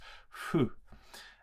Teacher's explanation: It's not a if. It's more like a sort of a breath, a little bit of friction between the lips.